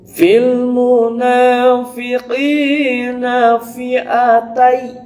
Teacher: qinya juga dibaca panjang, dua ketukan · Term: mad tabi'i